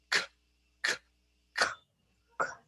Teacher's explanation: you're using the back of your mouth. You're using the soft palate.